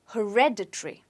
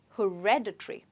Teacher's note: people often stress it on hair okay when it's supposed to be stressed on red so you say it as hereditary okay hereditary say it again